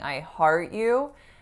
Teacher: if I'm saying I heart you, then there's no release on that T, right? So I'm not saying I heart you, it's I heart with an unreleased T.